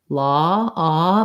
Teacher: so the ah vowel in law is um is a rounded mid vowel law ah my lips are round but it's fairly lacks whereas